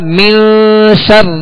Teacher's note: یہاں غنہ کریں گے نون پر، یہ اخفاء کا غنہ کہلاتا ہے